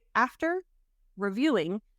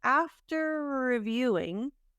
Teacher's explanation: the R at the end of after blends with the R at the beginning of reviewing. So we're not going to say after reviewing. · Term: connected speech